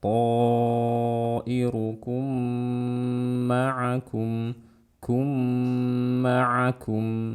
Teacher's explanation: Ini disebut dengan idgham mimi. Ya, saat ada mim mati bertemu dengan mim, ini disebut idgham mimi. Dibaca dengan gunnah yang panjang.